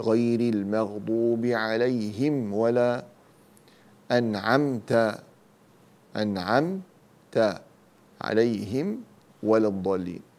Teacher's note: فالميم الساكنة بعدها جميع حروف الهجاء هذا يسمى إظهار شفوي، يعني نظهر الميم